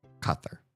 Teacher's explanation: Because it's not k. The Q indicates that it's back in the throat.